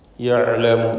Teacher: ആയിനിൻ്റെ ഉച്ചാരണം ശ്രദ്ധിക്കണം. തൊണ്ടയുടെ മധ്യമാണ് അതിൻ്റെ മഖ്റജ്.